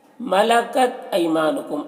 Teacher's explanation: ای میں یا جو ہے یہ یا لین ہے، اس یا لین کو نرم آواز کے ساتھ جلد پڑھیں گے۔ ما میں الف مدہ ہے، اسے ایک الف کے برابر کھینچ کر پڑھیں گے۔